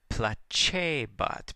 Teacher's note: the c followed by an e or an i softens makes a cha sound just like an italian